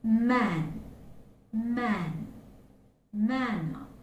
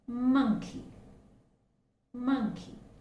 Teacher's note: that is the voiced consonant we have the vibration okay vocal cords are vibrating and the air is escaping through the nose